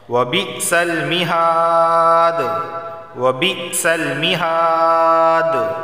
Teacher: یہاں قلقلہ ہوگا وقف کی صورت میں، کیونکہ دال حروف قلقلہ میں سے ہے